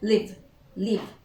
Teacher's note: The last sound that we produce is v, is voiced.